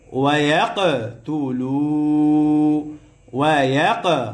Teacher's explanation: কফ কলকলার হরফ, প্রতিধ্বনি আওয়াজ হবে, ধাক্কা দিয়ে পড়তে হবে